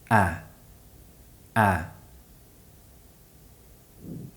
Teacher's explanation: this sound is generally produced with the mouth more open in modern pronunciation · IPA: /æ/